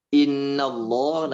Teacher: pada ghunnahnya ini harus ditahan · Pada gunnahnya ini harus ditahan seperti Innallah, nah itu ditahan innya karena ada tanda tasdid.